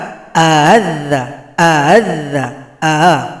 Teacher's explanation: A yang pertama jelas a yang kedua samar-samar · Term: tashil